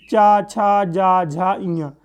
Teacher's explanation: चा, छा, जा, झा, इया, ये सभी तालव्य हैं, तालव्य वाले स्थान से बोले जाते हैं